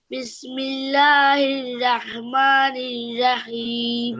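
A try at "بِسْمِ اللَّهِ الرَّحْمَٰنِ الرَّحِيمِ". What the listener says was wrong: তোমার রর মতো করে উচ্চারণ করো না। বিসমিল্লাহির রহমানির রহিম।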